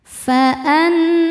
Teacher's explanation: Cara bacanya berdengung, dengungannya tahan kurang lebih 2 harokat. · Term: gunnah musyaddadah